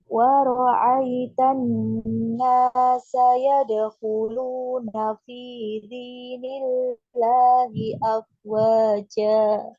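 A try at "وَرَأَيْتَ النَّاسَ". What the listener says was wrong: A-nya hamzah ya, bukan ain ya.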